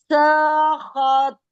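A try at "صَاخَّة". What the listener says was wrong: سا نہیں, سو. سوت کو تو موٹا پڑھیں.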